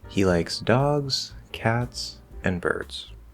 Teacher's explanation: we know we're going to rise on the options fall on the last one